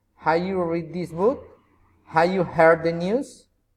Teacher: General question, rising intonation.